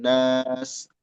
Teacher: Nas itu mad, jangan masuk hidung suaranya. Birobbin masuk hidung, nas jangan masuk hidung karena udah beda makhraj.